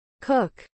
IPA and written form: kuk (Cook)